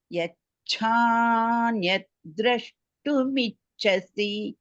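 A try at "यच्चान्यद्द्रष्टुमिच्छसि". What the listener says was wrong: எச்சான்னு வேண்டாம், எச்சாதான் அது. அதை மட்டும் பார்த்துக்கோ, பாக்கெல்லாம் பர்ஃபெக்ட் பர்ஃபெக்ட்.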